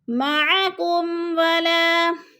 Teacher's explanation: مَعَكُمْ وَلَا، میم ساکن کے بعد واو آ گیا تو ادھر اظہار شفوی، غنہ نہیں کریں گے